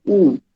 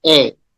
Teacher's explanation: If I say oo, then again it's rounded. Then if I say a, then again it goes flattened.